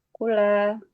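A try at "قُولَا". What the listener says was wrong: Kunya panjang atau pendek? Kenapa pendek? Kula kan itu kan? Pakai waw sukun kan?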